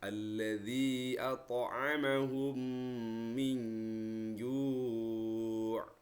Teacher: mim sukunnya dimasukkan ke huruf mim berikutnya. Artinya seolah-olah mim yang kedua itu berharokat tasdid. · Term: idgham mimi